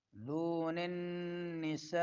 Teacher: دون النساء میں نون میں کیا ہوگا؟ غنہ زمانی